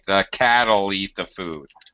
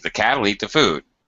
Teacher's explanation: the will gets reduced in spoken English to just an all sound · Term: reduced forms